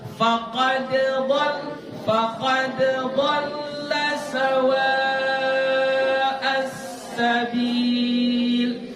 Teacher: Tetap dibaca qalqalah karena di situ tidak ada hukum idgham. Tidak sempurna hukum idghamnya di situ.